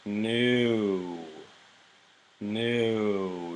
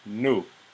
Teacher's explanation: The lips essentially stay in the same position for the whole time